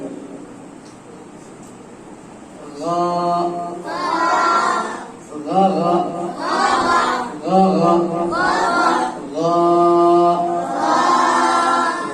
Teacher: গাইনের মাখরাজ হলো কণ্ঠনালীর শেষ হইতে